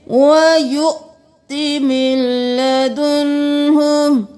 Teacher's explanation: वाव को नहीं पढ़ना, हमजा को झटका देकर पढ़ना है। मिन लदुन्हु नहीं करना, मीम ज़ेर लाम मिल, नून को छोड़ देना है।